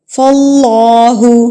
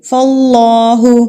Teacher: اللہ سے پہلے اگر زبر آ جاتی ہے تو اللہ کو ہم پر کر کے پڑھتے ہیں، اللہ پر پڑھا جاتا ہے، تو اس لیے ہم یہاں پر اللہ کو پر کر کے پڑھیں گے.